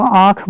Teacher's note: अगर आप इसमें देखेंगे चंद्रबिंदु में, तो इसमें क्या होता है कि मुंह और नाक दोनों से हवा निकलती है